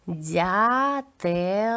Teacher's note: наприкінці твердий звук л